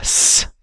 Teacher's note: Central grooving takes place in some fricative sounds like s to get you a very loud and high-pitched noise. That would use a combination of vertical muscles and the genioglossus to pull down on the center of the tongue.